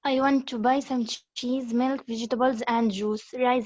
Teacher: rising intonations because we have cheese milk vegetables so i'm listing things